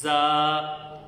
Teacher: زا کی ادائیگی کے وقت آواز میں سیٹی پیدا ہوگی اور اس کو لمبا کریں گے